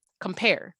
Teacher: That air in the last syllable stretches out. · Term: stress syllable